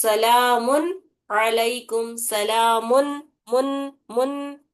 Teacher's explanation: مطلب وہ پوری نون کی آواز آنا، اس کی غنہ نہیں کرنا ہے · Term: اظہار